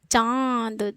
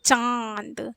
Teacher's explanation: है ना चांद इसको जो है चांद देखिए चांद जो है उच्चारित करते समय मुख और नाक दोनों पर जोर जा रहा है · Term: अनुनासिक